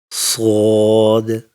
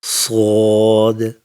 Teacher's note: Sod is a thick and heavy letter. To pronounce it, lift the back of your tongue slightly up and make a deep, thick whistling sound.